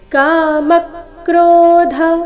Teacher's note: ಧ ಇಲ್ಲಿ ಮಹಾಪ್ರಾಣ ರಸ್ವ